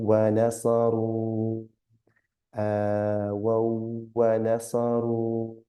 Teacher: Yeah, we have u with waw and sukoon, so that's a ru, but there's a little mud there, so we're going to elongate the ru to about 3 or 4 times, not more than 4